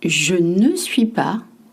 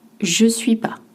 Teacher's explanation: when French speak in spoken French, French drop the ne. Par exemple, je ne suis pas devient je suis pas.